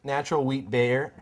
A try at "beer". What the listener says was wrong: Saying bear instead of beer is not an accent. That's mispronouncing a word.